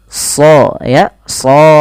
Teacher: dibaca dengan tebal karena dia ya huruf sad huruf Istia dan idbaq dan dibaca dengan tebal tidak hanya sekedar sho tapi SH ya